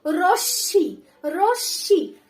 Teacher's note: রশ্মি double উচ্চারণ হবে, যেটার সাথে ম যুক্ত রয়েছে সেই বর্ণটি